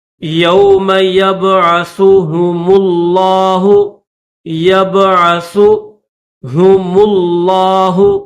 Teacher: ساتھ ملائیں گے، میم لام پیش مل، لام کھڑا زبر لا، لفظ اللہ کو موٹا کریں گے